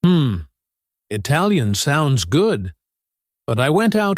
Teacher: try to make your voice go up slightly on good and then pause before delivering the butt. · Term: intonation for polite disagreement